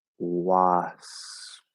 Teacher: But when we're speaking more quickly or a little more lazily, what we'll often do is instead of closing fully into the P and then releasing it back into the S, you're going to move toward the P with your lips.